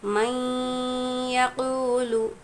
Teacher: میں آسان طریقہ آپ کو سکھاؤں گی کہ جب بھی جزم اور تشدید بازو میں ہو تو جزم والا حرف نہیں پڑھا جائے گا، ڈائریکٹ ہم نے یا کے ساتھ ملانا ہے، اور نون ساکن کے بعد یا حروف یرملون میں سے دوسرے کلمے میں آیا ہے تو غنّے کے ساتھ ملا کر پڑھنا ہے · واو ساکن سے پہلے پیش ہے، واو مدہ ہوگا، یہاں پر بھی ایک الف کی مقدار کھینچیں گے